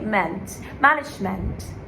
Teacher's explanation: the ment is like between the E and the A